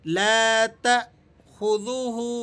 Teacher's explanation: تا کے بعد جو حمزہ ہے اس حمزہ کی رعایت کرتے ہوئے آپ نے یہاں تھوڑا سا جھٹکا لگا کر اسے پڑھنا ہے